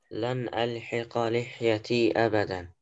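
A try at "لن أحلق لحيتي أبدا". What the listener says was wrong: أحلق. Because you were reading it. ألحق.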